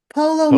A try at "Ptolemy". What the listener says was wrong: Ptolemy. The P is silent. It's Ptolemy. Or you can say Ptolemy if you like.